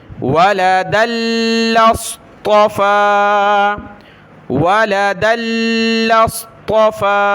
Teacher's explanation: صاد کو موٹا پڑھیں گے اور طا کو بھی